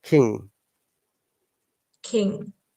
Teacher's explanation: try to pronounce the g through nose then it will be silent